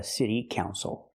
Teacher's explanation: the stress is on the first syllable the second syllable is not stressed